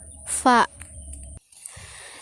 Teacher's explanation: Konsonan labiodental adalah bunyi yang keluar lewat bibir bawah dan gigi atas. Hurufnya yaitu fa.